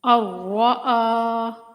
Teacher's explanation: را مشدد ہے، سختی کے ساتھ رک کر پڑھیں گے اور بغیر کھنچے